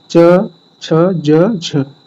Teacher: बारे में हम लोगों ने पढ़ा ये स्पर्श संघर्षी व्यंजन तो जो च से झ के बीच होते हैं उसको बोलते हैं स्पर्श संघर्षी व्यंजन